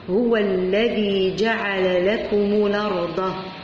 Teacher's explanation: إذا كانت هنا همزة وفوقها الفتح، إذا حذفت الهمزة ونقلت الحركة تاع الهمزة إلى الحرف اللي قبلها وأصبحت تنطق الأرض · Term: نقل حركة